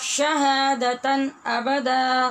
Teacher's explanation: شهادة أبدا यहाँ पर भी आपने देखा हमने शहादतन नहीं पढ़ा, क्योंकि दो ज़बर की तनवीन के बाद हमज़ा हरूफ हलक़ी में से है, लिहाजा इज़हार हलक़ी होगा